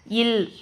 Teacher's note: மேல்வாய் பல்லின் அடியை நாக்கின் ஓரங்கள் தடித்து நெருங்குவதால் பிறக்கிறது